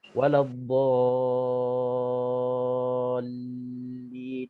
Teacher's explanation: Waladdallin, itu 6 harakat. Nak kena panjangkan 6 harakat. Selepas 6 harakat jangan terus kita sebut huruf yang selepas 6 harakat itu, kita nak kena sangkut sikit, gantung sikit bacaan kita untuk kita nak sabdukan, nak tasydidkan huruf yang sabdu selepas mad itu. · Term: mad lazim kalimi muthaqqal